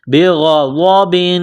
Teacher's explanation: غین اور ضاد کو موٹا کرنا ہے